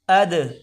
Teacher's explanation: حمزہ کو دال کے ساتھ ملا کر پڑھیں، یہاں قلقلہ کریں گے۔ اد، حمزہ دال زبر اد، اس کو خاموش نہیں پڑھا جائے گا۔